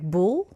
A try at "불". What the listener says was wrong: it's the B. There was more vibration in your pronunciation, like bull.